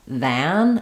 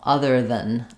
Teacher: When I say other than that, that is going to get stressed, and so other than is going to get shortened and reduced. If I say this word by itself, than, it'll have the ah sound like man or had, but in the reduced version, it's going to pretty much have no vowel